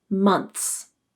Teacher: in the word months my tongue placement is nearly in the same spot as it is for the th the placement changes because my tongue is anticipating the next sound · the harder pronunciation uses the voiceless th sound